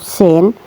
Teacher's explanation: tempat keluarnya yaitu dari ujung lidah. Dari ujung lidah dan ditempatkan pada dinding bagian dalam dua gigi seri bawah. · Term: huruf sin